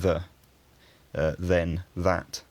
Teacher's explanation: All the rest of these forms started with a th in Old English, and normally this word initial th would stay fairly consistent throughout the history of English, but in extremely common function words like the, then, that, the th sound ends up getting voiced